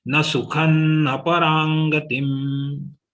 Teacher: Here only ra is dirgha, otherwise everything is short.